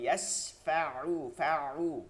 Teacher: আইনকে হলকের মধ্যখানে নিতে হবে